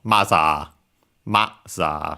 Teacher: So yeah, high only the ma and then everything else low.